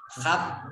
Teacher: ditekan dan ditahan dulu baru memantul